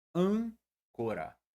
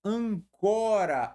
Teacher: Proparoxítona. Agora, quando eu tiro o acento, veja só, a sílaba tônica pula para a seguinte